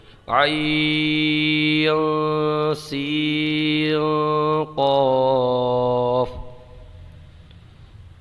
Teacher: عین میں اور سین میں آپ غنہ کیجیے، اخفا کر کے پڑھیے، اس لیے کہ عین کی ہجے دیکھیں گے عین یا نون ہے، اس کے بعد میں سین ہے، سین کی ہجے دیکھیں گے سین یا نون ہے، اس کے بعد میں قاف ہے، تو نون ساکن کے بعد میں ایک جگہ پر سین ہے اور ایک جگہ پر قاف ہے، تو یہاں پر اخفا ہوگا۔